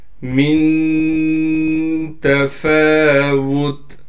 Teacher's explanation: نون پر اخفا یعنی غنہ کیا جائے گا، فا پر کڑا زبر ہونے کی وجہ سے فا کو ایک الف کی مقدار کھینچیں گے ، تا کو ہم وقف کی حالت میں ساکن کر دیں